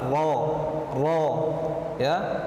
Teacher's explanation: ro berada pada ujung lidah menempel langit-langit atas, ro ya. Jangan dibaca ro, ini tidak tepat ya, karena makhraj huruf ro itu berada pada lidah bukan pada bibir.